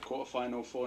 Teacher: he's dropping his t's quarter and positive